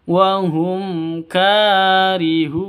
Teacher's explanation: mim mati bertemu dengan kaf, jelas terang, izhar safawi. Mim matinya jelas, kafnya juga jelas.